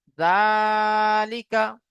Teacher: খাড়া জালের উপরে খাড়া জাবার এসেছে, খাড়া জাবার আলিফ মাদ্দার সমতুল্য হয়, তাই খাড়া জাবারকে একালিফ পরিমাণ টান দিয়ে পড়তে হবে।